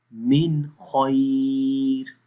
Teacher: من خیر، خا کو بھی موٹا پڑھیں گے